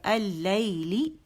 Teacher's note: لی کر کے نہیں کریں گے کہ مد بن جائے، بس 1 کاؤنٹ کے لیے آواز نیچے جائے گی، نچلا جبڑا نیچے جائے گا.